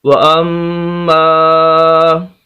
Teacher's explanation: یہاں پر غنہ بھی کرنا ہے، ناک میں آواز لے جانی ہے